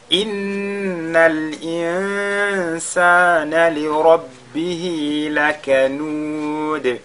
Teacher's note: Inna, on fait al-ghunna sur le nun. Insana, on fait al-ikhfa.